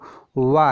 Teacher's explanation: दंत और ओष्ठ दोनों से बोला जाता है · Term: दंतोष्ठम